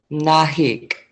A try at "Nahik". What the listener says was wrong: almost Nahik. Yeah, you don't have to pronounce your K's as strongly. Yeah, Nahik.